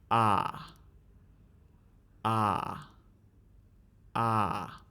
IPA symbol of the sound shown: ɑ